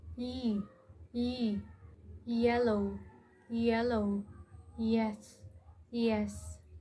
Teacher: A palatal approximant is similar to a quick ye glide. The tongue moves close to the hard palate but doesn't fully block the air.